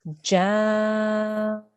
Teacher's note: Now, because of the mad al-kabir on the top, we need to elongate this jim sound for at least 4 seconds in total